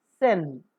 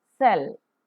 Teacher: voiceless because the vocal cords do not vibrate alveolar because the tip of the tongue comes very close to the alveolar Ridge or the teeth Ridge and fricative because a close approximation structure